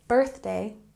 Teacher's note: his birthday, emphasis here on the first syllable, birthday